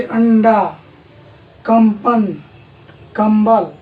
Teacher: जब भी हम लोग अनुस्वार का उच्चारण करते हैं, जैसे अंडा, कंपन, कंबल, तो वायु जो है हमेशा नाक से निकलती है।